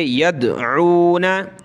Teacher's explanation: यहाँ दाल पर कलकला करेंगे